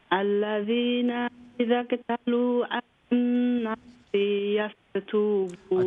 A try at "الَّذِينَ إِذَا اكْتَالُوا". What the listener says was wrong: اچھا، الذين إذا اكتالوا تا لمبا لام لمبا إذا اكتالوا على الناس يستوفون.